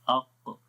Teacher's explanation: reason یہ ہے کہ قاف کے اندر ہم نے پڑھا تھا کہ مخرج جو ہے زبان کی جڑ تالو کی طرف بلند ہو رہی ہے · اصل میں آواز اوپر کے تالو کی طرف اٹھتی ہے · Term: استعلاء